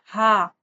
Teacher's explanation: हलक नीचे वाले हिस्से से यानी ये अक्स हलक से अदा होगा। हा ज्यादा ह नहीं करना इसको।